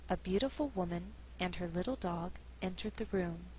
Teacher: Again, grammar is our guide, and we're dealing with a compound subject, meaning there's two. So it's possible to pause after woman and before dog and still sound natural. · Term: thought group